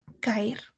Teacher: escuchamos perfectamente la separación entre cada una de las vocales. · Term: hiato